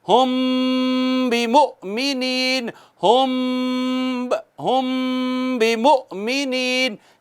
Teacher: میم ساکن کے بعد با ہے تو کیا ہوتا ہے؟ اخفاء شفوی ہوتا ہے. ایک الف کے برابر آواز چھپاتے ہیں